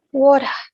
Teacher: This accent often omits the letter R in the pronunciation, especially if it is at the end of a sentence. For example, the word water, which in British is pronounced as water.